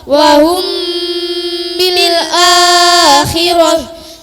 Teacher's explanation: mim yang mati dibaca samar dan disertai dengan suara dengung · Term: ikhfa syafawi